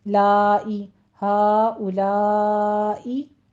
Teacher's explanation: यहाँ पे मद्दे मुत्तसिल वाजिब है, ठीक है, इसको 5 काउंट करना है